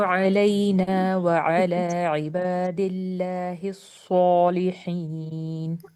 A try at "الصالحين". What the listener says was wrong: اچھا سو میں round lift نہیں ہونی چاہیے. سو مجھے ایسا لگتا ہے کہ او ساؤنڈ بن جاتی زیادہ. نارمل جسے سین کا ہوتا ہے نا سین کی طرح سا سو.